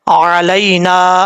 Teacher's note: آئین کو اپنے مخرج سے ادا کرنا ہے، اس کو حمزہ نہیں پڑھنا